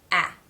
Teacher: exists on its own as a vowel in American English a it's sort of a mix between the a as in that and the a as in Father vowel sounds a to make this sound the tongue pulls slightly back and · to make this sound the tongue pulls slightly back and in general raises in the back it also spreads wide a note also that the corners of the lips raise and